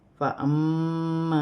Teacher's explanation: میم مشدد میں غنہ کیا جائے گا